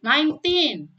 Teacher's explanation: kalau 19 itu dibaca sendirian teman-teman, maka yang ditekankan adalah yang silabel kedua